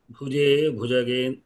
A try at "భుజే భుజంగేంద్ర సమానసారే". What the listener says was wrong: భుజంగేంద్ర అయి ఉంటుంది సార్. భుజంగేంద్ర అయి ఉంటుంది. ఛందస్సు సరిపోదు, ఒక లఘు తగ్గుతుంది.